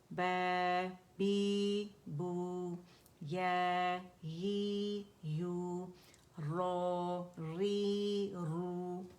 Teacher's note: खड़ी हरकत जो होती है हरूफ मद्दा के कायम मुकाम होती है, इक्वल होती हैं, टू काउंट्स खींचा जाता है, ठीक है। ऐसे कैसे पढ़ते हैं, अदायगी कैसी, बा फतह अलिफ सगीरा बा, बा कसरा या सगीरा बी, बा दम्मा वाव सगीरा बू, बा बी बू, या ही यू, रो री रू।